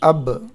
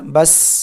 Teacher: قلقلہ کی آواز آئے گی، ایک جنبش ہوگی، ایک آواز لوٹتی ہوئی معلوم ہوگی